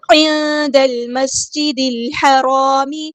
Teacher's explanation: الحرام، عین کو وسطی حلقے کے تھوڑا سا ادا کرنا ہے، نون ساکن کو ہم یہاں پہ چھپا دیں گے، اخفا